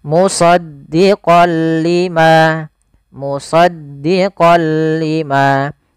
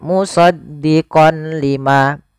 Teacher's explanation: memasukkan apa suara nunnya kepada huruf lam tapi tidak boleh disertai dengan ghunah · ada fathatain bertemu dengan huruf lam awalnya kalau kita baca musaddiqon karena bertemu dengan huruf lam tanwinnya masuk ke huruf lam suara n-nya dihilangkan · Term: Idgham bila gunah